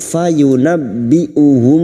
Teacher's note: masuk pada huruf ba yang bertasdid fayunabbiuhum mim sukun bertemu ba mim sukun bertemu ba Ikfa Syafawi mim sukun mendengung selama tiga harakat